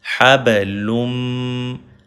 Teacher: لام جو ہے اس کو کنیکٹ کریں گے میم میں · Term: ادغام